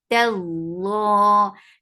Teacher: Tallah, ta is light. Lafzul jalalah will be heavy because there is fatha before it. Tallah, lafzul jalalah is always long.